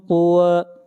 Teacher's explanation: طا کو موٹا پڑھیں گے، طا حروف مستعلیہ میں سے ہے